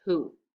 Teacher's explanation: this w is actually silent you don't hear it you hear an h first